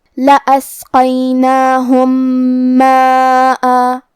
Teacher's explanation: کلمت ماءً میں یہاں مد الف ہے اور یہ بھی مد واجب متصل ہے، لہذا ہمیں اپنی آواز 4 مد کے برابر لمبی کرنا ہے۔ آخری میں حمزہ پہ تنوین زبر ہے۔ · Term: ادغام متماثلین صغیر